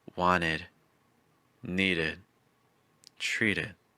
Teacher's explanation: we can find the e sound also for e d when it comes after a t or a d